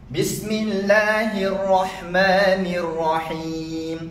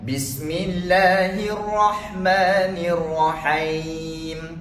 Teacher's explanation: Ha baris bawah bunyi hi, bukan hai.